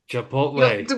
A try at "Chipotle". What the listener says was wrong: Well, there's no, you don't pronounce the T. The T is silent. It's silent T. It's Chipotle.